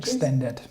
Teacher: the extended hour has the second syllable stress